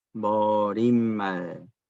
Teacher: 이때 말은 길게 하면 안 돼요. 짧게 발음을 해야 돼요.